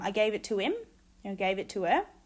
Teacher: the deletion of the h sound is common in function words such as him and her but in content words for example helmet and happen it remains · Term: h deletion, H deletion